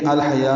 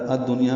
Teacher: دیکھیں الحیا میں لام پڑھا جا رہا ہے، الدنیا میں الف لام نہیں پڑھا جا رہا. دنیا میں نون ساکن ہے اور یا آنے کی وجہ سے یہاں پہ اظہار مطلق ہے، تو انما الحیات الدنیا، الدنیا میں ادغام شمسی ہو رہا ہے جو الف لام نہیں پڑھا جا رہا، اس لیے دال مشدد ہوئی ہے.